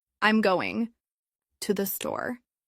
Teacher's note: if you're making a statement, your intonation will usually fall at the end